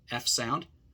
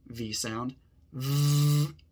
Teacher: But then turn on your voice, like this. So your mouth is 100% the same, but the difference is your voice.